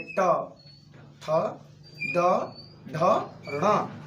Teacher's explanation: ये प्रत्येक वर्णों के उच्चारण में हमारी जीभ जो है मूर्धा को स्पर्श कर रही है